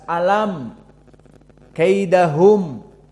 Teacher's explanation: dinamakan izhar karena mim keduanya dibaca dalam keadaan jelas mimnya makhrajnya jelas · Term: izhar syafawi